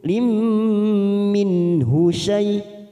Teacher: Walam tadlim mim sukun bertemu mim idgham mimi kita tekan 3 ketuk